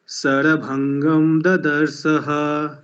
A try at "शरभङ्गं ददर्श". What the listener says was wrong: हाँ, आपका उच्चारण जो है वो सा की तरह सुनाई दे रहा है। शरभंगम ददर्शः।